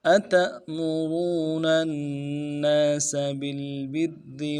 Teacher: ता को हमज़ा के साथ मिलाना है, मिलाएंगे, हमज़े के ऊपर जज़म है तो झटका देंगे